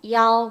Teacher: 야오 이도 들려야 되고 A도 들려야 되고 오도 들려야 되고